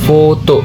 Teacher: Gigi atas menyentuh bibir bawah. Udara keluar tidak bersuara.